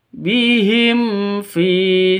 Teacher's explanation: Fin-nya panjang dua ketukan karena ada ya mati. ini ya mati ya diawali dengan kasrah mad asli atau mad thabi'i seperti itu.